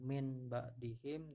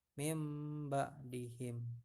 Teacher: bukan Min ba'dihim tapi mimba'di him ya ini adalah bacaan iqlab bunyi nun mati atau tanwin nya diubah menjadi Bunyi huruf mim